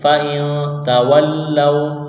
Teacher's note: اوپر تشدید ہے آگے لام کو واو کے ساتھ ملائیں گے، واو ساکن سے پہلے زبر ہے واو لین ہے اس کو کھینچنا نہیں ہے